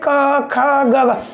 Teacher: कंठ से आ रही है केवल ऊपर ही ऊपर से आवाज आ रही है